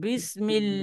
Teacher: یہ بسم اللہ کے لام سے جو لفظ اللہ کا لام ہے، اس سے پہلے میم کے نیچے زیر آ رہی ہے، تو اس لفظ اللہ کے لام کو باریک پڑھنا ہے